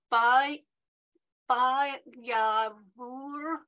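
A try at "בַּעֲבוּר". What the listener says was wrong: So on this one, the ayin actually has no sound. So ba'avor.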